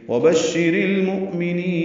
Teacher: واو ہونٹوں کی نا تمام گلائی سے ادا کریں گے ، با کو شین سے ملائیں گے، شی اور ری معروف · جا رہا ہے، مؤمنین میں حمزہ ساکن جھٹکے سے ادا ہوگا، میم کو جلدی پڑھیں گے، نون کو لمبا کریں گے · ملائیں گے، شی اور ری معروف طریقے سے ادا کریں گے، را کو باریک پڑھیں گے اور لام سے ملا دیں گے ، اظہار قمری ہوگا، لام پڑھا جا رہا ہے، مؤمنین میں